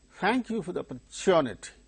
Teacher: syllable than so monosyllabic word it it gains stress automatically and in the case of opportunity individually the word wherever it occurs the third syllable gains stress